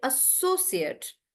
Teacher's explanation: when it's a noun, they're stressing on so